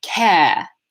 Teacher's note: it's not that the R is gone, but it's that it sounds different and it's represented by a longer vowel sound